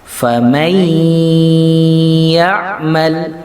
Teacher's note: Suara nunnya harus melebur dengan suara ya. Ya, jadi masuk suaranya langsung ke ya. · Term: idgham bi gunnah